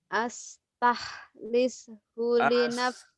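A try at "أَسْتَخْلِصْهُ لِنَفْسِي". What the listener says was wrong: Astakh. Kha. Astah. Kotor. Bukan astah. Kalau ha itu ha. Ini kha.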